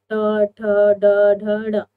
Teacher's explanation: मूर्धा स्थान क्या होगा? जहां पर आपकी जीभ पलट जाए